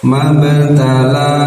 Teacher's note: ba bagian dari huruf Qalqalah yang harus dipantulkan kan Tapi karena di tengah-tengah bacaan pantulannya jangan terlalu ee besar